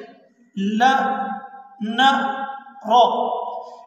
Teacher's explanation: آپ ذرا دیکھ رہے ہیں لا نا را، ان تینوں حروف کو بھی زبان کی نوک سے ادا کیا جاتا ہے۔ جب ہم زبان کی نوک کو اوپر تالو کے ساتھ جا کر لگاتے ہیں تو یہ تین حروف ادا ہوتے ہیں